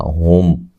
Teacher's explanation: ہلا کر نہیں پڑھنا، ہم میم ساکن کا یہاں اظہار ہو رہا ہے، غنہ نہیں کریں گے